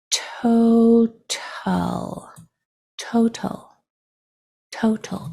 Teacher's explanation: the shwah sound kind of disappears into the letters next to it into the sounds next to it